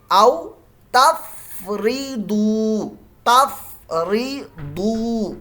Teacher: ضاد کی آواز موٹی ہوتی ہے، بھاری سی ہوتی ہے، کیونکہ مستعلیہ حرف ہے